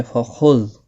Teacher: خا مستعلیہ ہے، پر پڑھا جائے گا